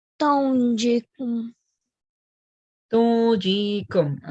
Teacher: you have to hide the noon sound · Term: ikhfa